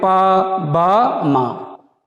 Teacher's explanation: अल्पप्राण इनको बोलने में, इनके उच्चारण में अल्प प्राण वायु निकलती है